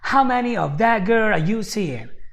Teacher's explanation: in the beginning he actually kind of emphasized the word how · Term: word stressing